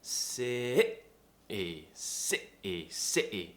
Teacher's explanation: it's tightening the throat really tensing it and cutting a sound out to replace the T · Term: glottal T